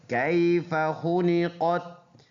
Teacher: کیف میں یہ یائی لین ہے، نرم پڑھنے والا